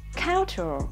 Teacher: Đúng là trọng âm rơi vào âm tiết thứ nhất thật